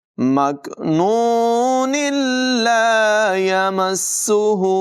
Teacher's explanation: अगर मिलाकर पढ़ेंगे तो फिर नून लाम के साथ मिलाएंगे, इसलिए कि तनवीन के बाद लाम हुरूफ़ मालूम में से है, तो इसलिए मिलाकर पढ़ने की सूरत में यूँ पढ़ेंगे, मकनून ला यमस्सुहु, और अगर यहाँ वक़फ़ कर लिया तो फिर यहाँ से अदायगी शुरू होगी।